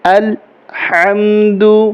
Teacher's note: ہا ہے حلق سے نکلے گا